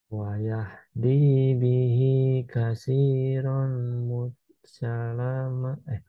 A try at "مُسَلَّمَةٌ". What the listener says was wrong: Musalla tasdid. Nah, jadi cara untuk mentasdidkan huruf, sukunkan aja dulu. Musalla, musalla.